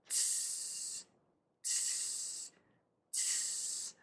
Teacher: And then for the S, we are going to pull the tongue down and let the air just keep moving out. So we're going to have that quick T, T, and then keep the air moving out for that S